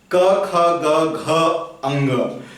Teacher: क वर्ग का उच्चारण स्थान होता है कंठ